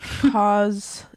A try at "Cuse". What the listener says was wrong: Did you just say cause instead of cues?